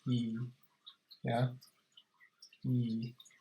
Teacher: So basically, if you look at the vowels here, this top one here is E. You notice your tongue is kind of forward a bit. Yeah, and your mouth isn't open much.